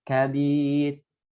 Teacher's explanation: Ra'nya tarkik ya, karena disukunkan atau diwakafkan, kemudian sebelumnya huruf berharakat kasrah. Ya, sukun ya, kemudian sebelumnya kasrah.